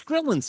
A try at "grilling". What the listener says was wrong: happened to the G? Grilling. second G.